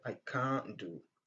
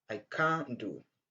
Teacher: quand le son T généralement vient entre deux consonnes, on ne prononce pas le son T à la fin du mot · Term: assimilation du son T